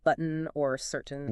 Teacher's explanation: the held T before an N like in button or certain where the T sound almost gets swallowed before the N · The air stops for the T but releases through the nose for the N. It's not quite button.